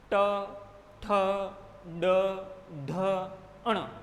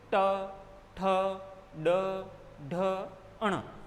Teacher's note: जिह्वा झटके के साथ में मूर्धा को छू करके तुरंत वापस आ जाएगी, झटके के साथ। यानी कि ये समय आप समझ लें कि सेकंड से भी कम समय लगता है इसमें, इस क्रिया में, और इन वर्णों का उच्चारण हो जाता है। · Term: मूर्धन्य व्यंजन